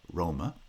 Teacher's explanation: the vowel in ma or ma becomes reduced to schwa because it's unstressed